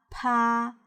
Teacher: a long aspiration sound could be detected after the release of the stop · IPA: /p/